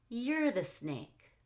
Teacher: So here I stress you're. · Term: explicit contrast